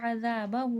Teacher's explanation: عذابہ، کھینچ کے پڑھا جائے گا کیونکہ الٹا پیش بھی ہے اور مد بھی ہے